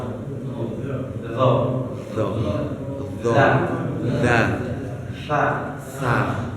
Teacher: Jadi tiga huruf itu sama makhrajnya. Jadi kalau mau ucap huruf go, itu ujung lidah kita nih ke pangkal gigi seri atas. Nah, lidah kita sedikit keluar.